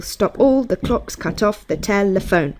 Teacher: five sets of one unstressed and one stressed syllable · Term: iambic pentameter